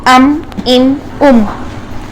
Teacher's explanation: साकिन हालत में जब हम इसको अदा करेंगे तो जाती गुन्ना तो आएगा इसका